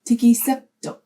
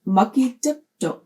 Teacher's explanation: Because the strong I comes before a T and a vowel is right after it, that T will become an S. It will change to tiki septok.